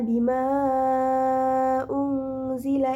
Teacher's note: terdapat huruf mad tabi'i bertemu hamzah di lain kalimat, dibaca panjang sebanyak 4 harokat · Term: mad jaiz munfasil